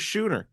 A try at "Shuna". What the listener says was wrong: Shuna with an A at the end.